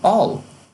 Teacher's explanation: I will tem a contração I'll, que ainda é produzida no contínuo da frase como all